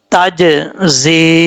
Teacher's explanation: زا سیٹی کے ساتھ پڑھا جائے گا